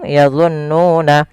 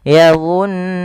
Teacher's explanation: jangan langsung yazunnuna, tapi ditahan dulu nunnya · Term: gunnah